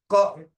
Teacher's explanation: when we are saying the kanthya ka, the radical touches the pharyngeal.